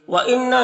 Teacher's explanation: نون مشدد غنہ ہوگا، یعنی اس کی آواز کو ناک میں لے جا کر گنگنائیں گے، ایک الف کے مقدار.